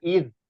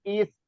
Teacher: Ini juga hames, cuman karena dia makrotnya toroful lisan atau di ujung lidah bertemu dengan gigi seri atas dan kita harus keluarkan sifatnya yaitu juga rokowah dan juga hames ya sama sifatnya. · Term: huruf zal